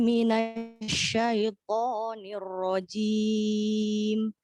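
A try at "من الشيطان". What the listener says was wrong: Untuk poknya mohon Bu boleh dilembutkan sedikit. Tadi poknya sudah tebal tapi kurang lembut dari vokalnya. Minasyaitoni.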